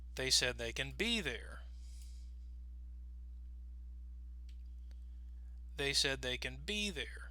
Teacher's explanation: notice our voice is going to go down on the word can because in context we're going to pronounce it with a schwa sound